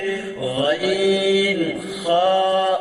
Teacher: হলকের শেষ হইতে গাইন খা উচ্চারিত হয়।